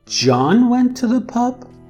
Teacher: john would be the tonic syllable